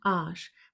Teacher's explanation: Bei Arsch ist das tatsächlich ein Zentralvokal.